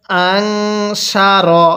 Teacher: এই নুন সাকিনটা কিন্তু গুনাহ করে পড়তে হবে, কারণ এই নুন সাকিনের পরে শিনটি হলো ইকফার হরফ, আর নুন সাকিনের পরে ইকফার হরফ থাকলে নুন সাকিনটা গুনাহ করে পড়তে হয়।